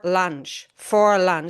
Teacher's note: So, there's equal stress in for and in lunch. Uh-uh. If you want to sound American, you you need to reduce the fur and stress the lunch so the lunch can really pop out.